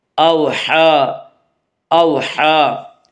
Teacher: جلدی پڑھیں گے، اوحا اوحا، ہا کے اوپر کھڑا زبر ہے، کھڑا زبر کو ایک الف کے برابر کھینچ کر پڑھیں گے · واو کو جو ساکن ہو اور اس سے پہلے زبر ہو۔ واولین کو نرم آواز کے ساتھ جلدی پڑھیں گے ، اوحا اوحا، ہا کے اوپر کھڑا زبر ہے، کھڑا زبر